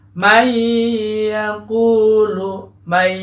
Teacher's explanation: Nunnya dilebur ke huruf ya. Kemudian ada dengung di situ juga, ya. May, untuk membedakan dengung tidak dengung, saya katakan uji saja kita sambil menutup hidung kita dengan memencet bagian batang hidung.